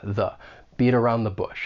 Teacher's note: that final T in beat it comes between two vowel sounds so I am going to pronounce this as a flap T which is going to sound more like a soft D and then I can link that flap t with the vowel · that is a weak the because it comes before a consonant sound so you would say this with that schwa